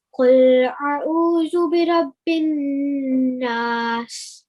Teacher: So basically what you did is you didn't elongate the stroke, but you prolonged the noon sound for 2 seconds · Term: elongating